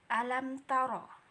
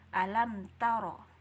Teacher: jadi enggak ada membacanya dengan dengung alam taroh nggak boleh kayak gitu ya jadi cara membacanya langsung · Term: izhar